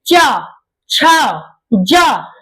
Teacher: जो आपकी जिह्वा है ये आपके दांत के पास ऊपरी तलवे में आके क्या सटती है